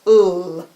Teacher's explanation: the L your tongue goes up to the roof of your mouth and it stays there